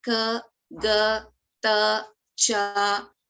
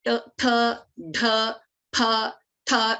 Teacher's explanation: Like I said earlier, Alpa Pranaha, we use less breath to pronounce the letter, and Mahapranaha, we use more breath, more prana, more air to pronounce the specific letter.